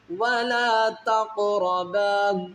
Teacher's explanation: ولا لام کے آگے الف ہے، اس کو الف کی مقدار کھینچیں گے، ولا واؤ کو نہیں کھینچیں گے۔